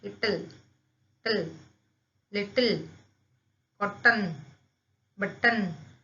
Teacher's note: इसमें जो L और N है यह एक सिलेबिक कॉन्सोनेंट्स है क्योंकि वह वहां पे एक वोवल की तरह एक्ट कर रहे हैं, उसे हम कहेंगे सिलेबिक कॉन्सोनेंट्स.